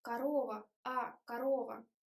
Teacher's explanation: the last syllable, is wide, корова, but first o is like sound shwa, it's o, корова, корова.